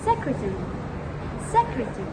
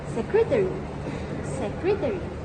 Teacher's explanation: in British, this word is pronounced as secretary, secretary, where you swallow the last syllable. And in American, this word is pronounced secretary, secretary, where you put clearer emphasis on the airy ending.